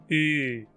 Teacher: É igual a um I, mas os lábios se arredondam. U, como no francês ou no alemão. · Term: vogal anterior fechada arredondada